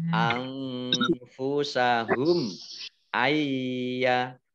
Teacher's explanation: Nun sukun bertemu dengan huruf ya, bacaan idgham bi gunnah. Idgham masuk bi dengan gunnah mendengung.